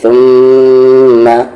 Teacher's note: میم پر تشدید ہے، غنہ ہوگا یعنی آواز کو ناک میں رکھتے ہوئے